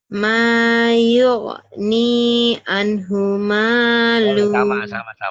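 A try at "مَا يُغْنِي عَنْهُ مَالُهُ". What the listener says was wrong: Mayugni anhu maluh. Penekanannya hati-hati. G-nya yang belum mantap ya. G.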